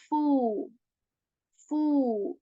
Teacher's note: this letter is articulated when the uh tip of your upper teeth it touches the lower lips and air is removed from your mouth and you say FU F again you are stretching this sound